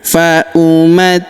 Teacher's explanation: Huruf ti kita tahan dan kita tekan karena terdapat tanda tasydid di sini di atasnya